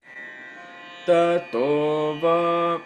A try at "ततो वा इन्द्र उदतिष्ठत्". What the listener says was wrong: Virama is missing, yeah.